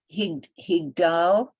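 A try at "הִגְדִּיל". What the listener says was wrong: Careful, check the vowel under Dalid.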